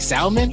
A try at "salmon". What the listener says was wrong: Salmon. Did you just pronounce the L in salmon? Salmon.